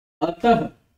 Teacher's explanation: इसका उच्चारण जब आप करेंगे तो आपको समझ में आएगा कि मैं इसमें ह भी बोल रहा हूं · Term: विसर्ग